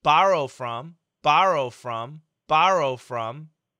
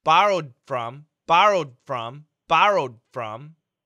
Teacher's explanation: we can hear there's a stop D sound and that's what we do in daily English we stop the D